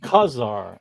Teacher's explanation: emphasis on the first syllable